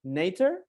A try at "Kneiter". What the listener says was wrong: Yeah, if you would say that if you're English, yeah, but we pronounce the K and the N together, so it's Kneiter.